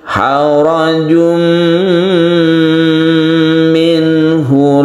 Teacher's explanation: tanwin tersebut masuk ke huruf mim dan kita panjangkan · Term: idgham bi gunnah